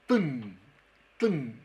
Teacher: termina con la lengua entre medio de los dientes, por eso son interdentales